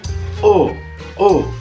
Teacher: È una vocale quasi posteriore, quasi chiusa, arrotondata.